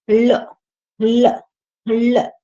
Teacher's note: ऐसे वर्ण जिनको बोलने पर जीभ के पास से हवा निकल जाए, यानी दोनों तरफ से हवा निकल जाए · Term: पार्श्विक